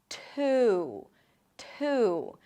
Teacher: The T, by the way, is aspirated. So it feels like there is a little H right after the T.